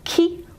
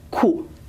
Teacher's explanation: the tongue contact with the roof of the mouth is much more forward for ki and more back for ku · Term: backness